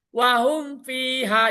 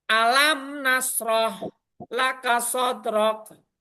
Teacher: Jadi enggak ada samar, enggak ada dengung. Cukup mematikan huruf mim dan baca huruf setelahnya itu jelas. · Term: Izar Safawi